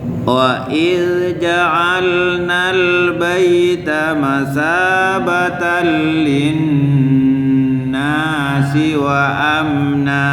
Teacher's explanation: Jadi lin itu hitungannya sempurna, ya. Lin, dengung dan ditahan.